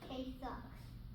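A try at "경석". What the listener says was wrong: Why are you saying with an O? Sounds like a sock. I think it's more of a U, isn't it a U sound? Yeah, it's a U sound, honey.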